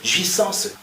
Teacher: Mais là, je dois nasaliser le A, jouissance, et je dois avaler le E